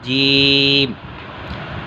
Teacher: یہ جو ریڈ ہے نا، یہ تالو ہے، اور یہ جو اٹھی ہوئی ہے یہ زبان ہے۔ زبان کا درمیان والا حصہ تالو کے درمیان والے حصے سے لگے